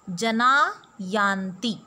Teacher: Here Visarg is preceded by the vowel A and is followed by the letter Y of Yanti. Y is a soft consonant, so Visarg is dropped and we get the Sandhi Jana Yanti